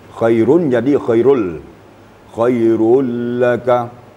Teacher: Apabila nun mati atau tanwin bertemu dengan salah satu huruf yang dua, iaitu lam dan ra, maka bunyi nunnya dileburkan jadi tasdid. Berubah jadi tasdid. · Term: idgham bila gunnah